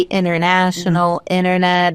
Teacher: They say this inner instead of pronouncing the T as a hard T.